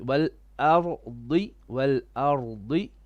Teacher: only the ra becomes heavy